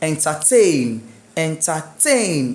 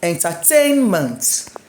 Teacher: My stress on tain.